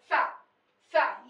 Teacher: ये एकदम दांत से उच्चारित होता है। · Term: दंत श